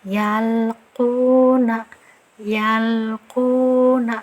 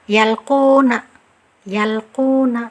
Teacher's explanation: Nah, cara bacanya itu lam sukun ini tidak terlalu ditahan suaranya, tidak pula mengalir sekali seperti rokhawah, tapi mengalirnya sedang-sedang saja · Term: sifat tawasud